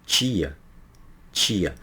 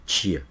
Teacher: Percebe-se que o dorso da língua dobra automaticamente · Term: alofone